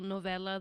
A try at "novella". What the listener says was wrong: I know, but you said it with like the hard accent. It's a novella. Fine,